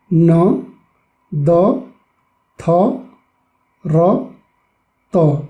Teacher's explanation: दन्त्य भनेको के हो भन्दाखेरि हाम्रो जिब्रोले चाहिँ दाँतको पछाडिको भागमा चाहिँ छोएर उच्चारण हुने वर्णहरू हो। जस्तो हामी उच्चारण गर्दाखेरि न, द, थ, र, त गर्दा यसै जिब्रोको टुप्पोले चाहिँ हाम्रो दाँतको पछाडिको भागमा जरामा चाहिँ टच हुन्छ, जसलाई चाहिँ त्यही भएर यसलाई दन्त्य वर्ण भनेर भनिन्छ है।